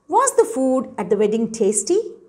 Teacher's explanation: so you are asking questions in a rising tone